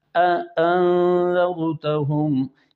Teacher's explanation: اپنی اصلی حالت میں حمزہ کو سانس بند کر کے پڑھنا اسے تحقیق کہتے ہیں ، جیسے انذرتہم، یعنی انذرتہم بھی نہیں کرنا، انذرتہم بھی نہیں